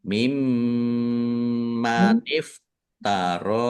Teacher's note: ro fathah berdiri mad thobi'i panjang dua harakat